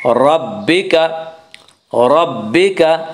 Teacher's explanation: را کے اوپر زبر پیش آئے تو را کو پر پڑھا جائے گا